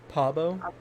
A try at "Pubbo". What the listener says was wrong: Pub, like the U. Pubo. Not Pabo. Pubo. Like Poobo. Pubbo, Pubbo.